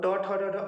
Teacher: ट वर्ग जो है वो ट ठ ड ढ अड़ बोलेंगे तो ट ठ ड ढ अड़, ये मूर्धन्य से निकलता है। मूर्धन्य मतलब जब आप इसको बोलते हैं तो जिह्वा मुड़ जाती है